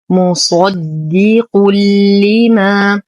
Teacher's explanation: تنوين وبعده حرف اللام، فالحكم إدغام كامل بلا غنة